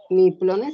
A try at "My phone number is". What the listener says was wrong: Recuerda que PH es phone, F, como una F va a sonar.